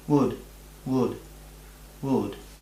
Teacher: Ponemos la boca para decir u, pero en vez de decir E larga o E corta o O, diríamos U corta.